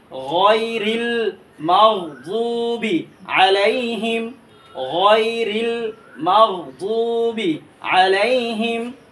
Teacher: দদের মাখরাজ হচ্ছে জিহ্বার গুড়ার কিনারা উপরে মারিদ দাঁতের গুড়ার সাথে লাগাবেন, দদকে মোটা করে দিয়ে পড়বেন, গয়নকে মোটা করে দিয়ে পড়বেন